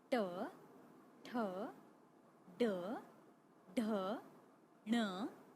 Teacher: मूर्धन्य, तालु का मूर्धा भाग।